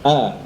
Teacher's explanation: istifal, posisi pangkal lidahnya rendah.